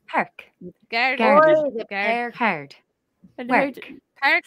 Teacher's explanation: in the Irish accent, it's as if we smile, making the vowel very broad as it comes forward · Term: Irish R